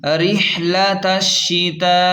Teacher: اوپر بڑی مد ہے تو اسے 4 الف کے برابر کھینچ کر پڑھیں گے